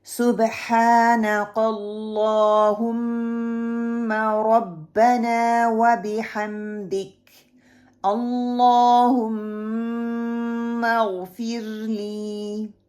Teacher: صبح با قلقلہ ہے، ہا کو middle part of my throat سے نکلے گا. اللہ لام کو موٹا کیا جائے گا اور پکڑ کے رکھوں گی، اس کو میں نے چھوڑنا نہیں ہے. · اللہم اغفر لی، غین کو پکڑیں گے تھوڑا سا اور اس کو موٹا پڑھیں گے اور میم پہ غنہ کریں گے